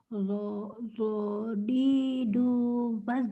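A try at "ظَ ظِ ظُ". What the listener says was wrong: Jangan dodi, kalau dodi mah berarti dah. Dodi. Mulutnya kayak gimana sih Bu?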